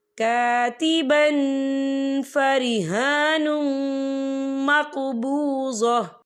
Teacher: تنوین کی آواز کو ناک میں چھپائیں گے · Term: اکفا